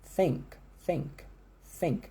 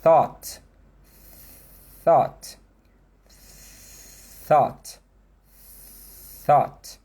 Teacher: Enquanto eu estou no TH, você só escuta o sopro.